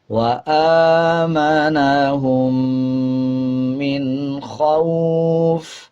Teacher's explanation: جب وقف کریں گے تو فا کے جو دو زیر ہیں اس کو سائلنٹ کر دیا جائے گا اور وقف کرتے ہوئے فا کو آدھا پڑھا جائے گا